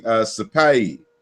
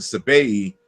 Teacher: P's and B's, the voiceless and voice bilabial plosives, interchange with each other. So the same root, the same word could be Sapai in one dialect and Sabai in another.